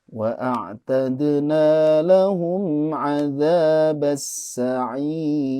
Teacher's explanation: dibacanya jangan ditahan ya lahumnya, karena ini mim sukun bertemu huruf ain tentu dibaca izhar. Jadi wa a'tadna lahum 'adzabas sa'ir.